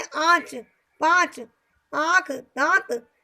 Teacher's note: जो कि थोड़ा नाक और मुख दोनों के टच से उच्चारण होते हैं, उन्हें हम अनुनासिक वर्ण बोलते हैं।